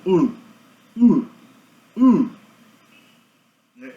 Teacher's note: Esse som desse M de cabeça para baixo é U, nosso querido U, só que sem o lábio. U. Esse é o U arredondado.